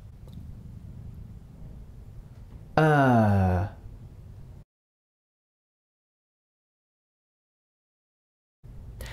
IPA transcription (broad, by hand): əː